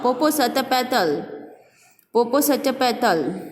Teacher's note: He is giving the stress on the each syllable.